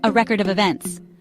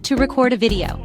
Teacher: when you stress the first syllable it becomes a noun as in a record of events but when you stress the second syllable it turns into a verb